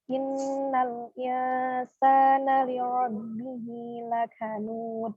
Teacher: Huruf kafnya ada mengeluarkan nafas, mengeluarkan udara.